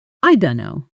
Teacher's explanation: The phrase I don't know is famously compressed in fast native speech, often coming out closer to I don't know with the t and the beginning of no blending almost completely together